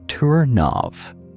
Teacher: Liaison. Linking final consonant to initial vowel.